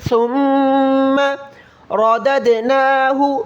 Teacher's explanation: سا کا مخرج یہ ہے کہ زبان کی نوک تھوڑی سی باہر نکالیں. ثم رددناہ، را کو موٹا پڑھیں، رددناہ، اور اس دال پر حرکت دیں، دال دال زبر دد، ردد.